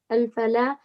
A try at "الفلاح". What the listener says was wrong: The shadda on the lam. الفلاح.